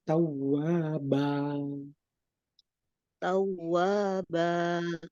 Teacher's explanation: tidak boleh pakai hamzah mati, tapi tawwaba